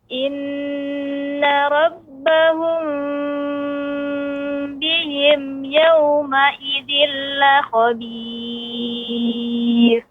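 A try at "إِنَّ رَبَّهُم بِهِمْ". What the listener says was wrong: Namun dia tidak ditekan dengan kuat Ibu. Misalnya rabbahum bihim tidak. Dia cukup ditempelkan saja. Inna rabbahum bihim. Ya, jadi cukup ditempelkan saja.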